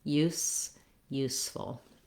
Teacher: for the S sound, my tongue is behind my teeth. It's not touching any teeth, and the sound comes out the front in a small, steady stream.